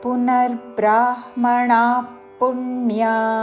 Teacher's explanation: బ్రాహ్మ అని అంటే హా పలకరినట్టు, అందువలన పునర్బ్రాహ్మణ ణా రాణిలో పలికే ణా దీర్ఘముతో విసర్గ ఉచ్చారణ పక్కనున్న పదములోని పా అందుకుంటూ శ్వాస వదిలి చివరిన ఫ లాగా ఉచ్చారణతో